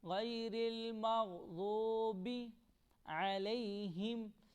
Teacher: عین حروف حلق ہے، اس کو ہم حلق سے پڑھیں گے اور اس ہا کو ہم سینے سے پڑھیں گے